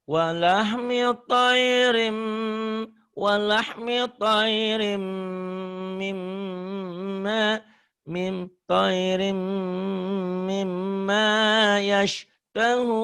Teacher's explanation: idgham bigunnah, gunnah sama-sama ditahan, sama-sama double, sama-sama dengung.